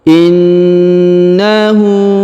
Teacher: huruf na ditahan dan ditekan karena berharakat tasdid in kemudian Hunya dipanjangkan dua harakat karena harakat u terbalik sedangkan